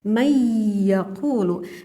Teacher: Yang mana nun ini dikarenakan menghadapi huruf iya, membacanya harus kita dengungkan. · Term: gunnah aridiyah